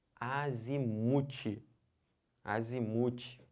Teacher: É o mu que é a sílaba tônica.